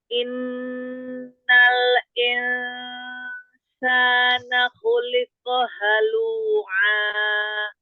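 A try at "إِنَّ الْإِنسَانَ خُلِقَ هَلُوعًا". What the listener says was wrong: Khuliqo, tebalkan qafnya. Khuliqo. Jangan ada hamzah. Khuliqo. Ko. Nah, tebalkan ya. Angkat pangkal lidahnya. Ko. Ya, dia tebal ya. Khuliqo. Liqo. Jadi jangan ada hamzah, harokat fathahnya.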